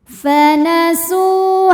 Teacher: Sebab ada waw sukun yang sebelumnya berbaris dhammah. Maka huruf sin kita panjangkan 2 harokat. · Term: mad tabi'i zahiri